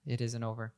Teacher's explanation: we drop the T and the N connects to over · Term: connected speech